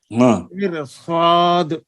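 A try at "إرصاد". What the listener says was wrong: نہیں را کو پر کریں، صاد کو بھی پر کریں. نہیں نہیں، ارصاد، ان سب میں را کو پر پڑھیں گے.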